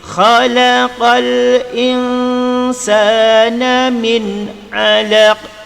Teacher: Pada perkataan insan ini wajib menyembunyikan nun beserta dengung.